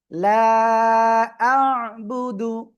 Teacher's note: আ গলা চেপে পড়তে হবে